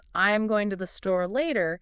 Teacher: So in the sentence, I'm going to the store later, the natural emphasis would be on going store and later